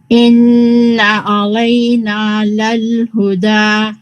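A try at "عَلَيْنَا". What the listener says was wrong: Here, alayna sounded heavy, so just mark that. Alayna, alayna.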